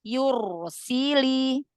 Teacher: yu-nya jangan dipanjangkan harokat, jangan tamtid.